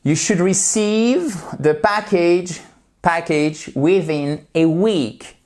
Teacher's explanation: So, you should, et on ne prononce pas le L.